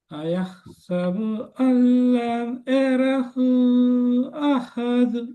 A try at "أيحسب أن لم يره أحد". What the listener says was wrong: போதாது. யரஹு 3 செகண்ட். நீங்க 3 second 1 second தான் நீட்டீங்க. யரஹு.